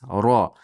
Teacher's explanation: Ro yo'g'on, ikki harakat miqdor cho'zamiz.